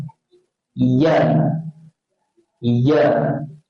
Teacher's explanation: Dia guna tengah-tengah, dia tolak dekat kita punya langit-langit keras. Langit-langit keras kat tengah-tengah tu.